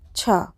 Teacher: छा वर्ण का विवार, श्वास, अघोष और महाप्राण, ये हमारे 4 प्रकार के बाह्य प्रयत्न हो सकते हैं